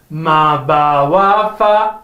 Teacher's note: Ma, ba, wa, fa are from the lips.